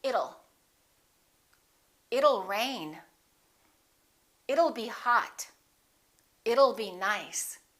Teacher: difficult one it will how does that sound don't say it'll let's change that t into a fast d · Let's change that T into a fast D and say it'll.